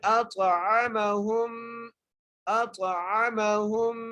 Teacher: ہا کو میم سے ملانا ہے اور میم کے اوپر غنہ بھی کرنا ہے ، ہا کو میم سے ملاتے ہوئے غنہ کرنا ہے، اور